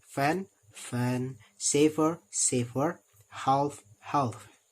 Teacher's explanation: The lower lip is in contact with the upper teeth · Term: labiodental